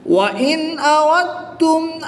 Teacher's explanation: نون ساکن کے بعد حمزہ حرف حلقی میں سے ہے تو یہاں پر اظہار ہوگا یعنی کہ نون ساکن کو خوب ظاہر کر کے پڑھیں گے